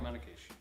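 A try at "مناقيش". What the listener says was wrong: It's actually manaish. You don't say the K.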